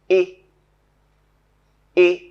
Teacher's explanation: When we say this sound, the part of the tongue nearer to the center, and to the front is raised. It is raised just above the off-close position.